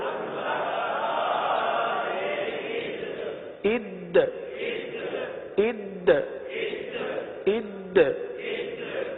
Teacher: حمزہ دال زبر اد، اب دیکھیں دال ہے، دال حروف قلقلہ میں سے ہے، دال کو جماؤں کے ساتھ ادا کرتے ہوئے یہاں پر قلقلہ بھی ادا کرنا ہے